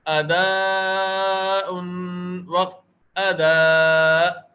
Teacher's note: حمزہ پر رک جائیں گے. اداء حمزہ ساکن پڑھا جائے گا. یہاں وف کی صورت میں حمزہ ساکن پڑھا جائے گا, اور دو زبر کی صورت میں ایک الف کے برابر کھینچ کر ادا ہوتا ہے.